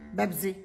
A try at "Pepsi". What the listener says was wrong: Pepsi. Pepsi. It's Pepsi. Mom, with a P, not a B.